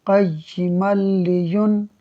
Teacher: ہم بغیر غنہ کے میم کو لام سے ملا کر پڑھیں گے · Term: ادغام بلا غنہ